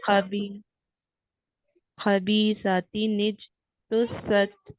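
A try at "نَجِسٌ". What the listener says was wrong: आप निज करके रोक रही हैं, रोके नहीं, इसे छोड़ दें, मतलब पढ़ते ही हटा दें जगह। निज, निज ऐसे बोले, निज। सच। निज तो सच।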